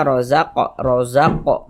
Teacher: ini huruf qaf tadi kita pantulkan ya bacanya rozaq rozaqo mantul seperti itu ini namanya Qalqalah Sugra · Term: qalqalah sughra